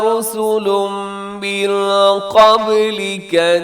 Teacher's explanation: رسل پہ تنوین کے بعد میم ادغام ہوگا، من قبلک بھی اخفا ہوگا.